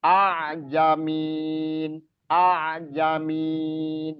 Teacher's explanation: a'jamin a'jamin itu hamzah bertemu ain. Bukan berarti dipanjangkan